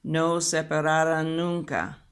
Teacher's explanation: you have 2 N's that will be connected, and it's just elongated a little bit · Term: union of sounds